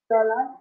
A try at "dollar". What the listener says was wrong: Uh, can you please pronounce it with the A, You know, people always confuse the O because we speak Spanish.